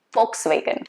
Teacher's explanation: volkswagen v is supposed to be pronounced as f